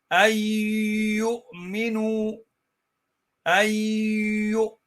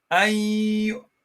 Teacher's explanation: All right, so there is also idgham in here where you merge noon into the ya, and then what you do is while you're merging the noon into the ya, you feel a bit of a vibration coming from the nose